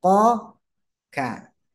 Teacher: Kaf itu keluarnya dari pangkal lidah